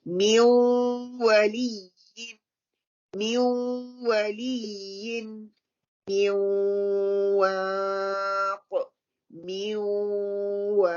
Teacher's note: With wow and ya is the incomplete gunna. We do the gunna, but it's not fully gunna.